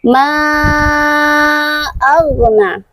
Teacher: Ma panjangnya pun dari dua harakat menjadi empat atau lima harakat. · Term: mad jaiz munfasil